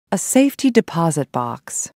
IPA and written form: ˈseɪfti-dɪˈpasɪt baks (safety-deposit box)